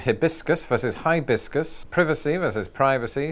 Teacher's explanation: use of a short I becoming a long I in American English